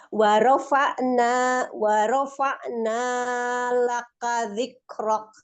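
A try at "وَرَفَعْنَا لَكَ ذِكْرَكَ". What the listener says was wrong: Nah, nyanya jangan terlalu panjang. Dua aja.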